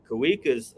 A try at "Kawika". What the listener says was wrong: Kavika, that's how you say it. Kavika. So in Hawaiian, if it was a word that started with a W, like Waikiki, you say wa. But if the W happens after the first syllable, it's a V. Kavika.